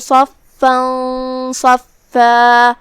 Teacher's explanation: صاد حروف التفخیم میں سے ہے تو ہم اسے بھاری آواز میں منہ پھلا کے ادا کریں گے